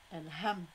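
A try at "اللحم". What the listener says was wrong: L'ham, pas L. Juste l'ham.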